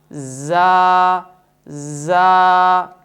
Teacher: Number 2، صفت جہر کی وجہ سے اس حرف کی آواز میں بلندی ہوگی، سانس بند ہوگا مگر آواز میں بلندی ہوگی۔ نمبر 3، صفت رخوت کی وجہ سے اس حرف کو نرم ادا کریں گے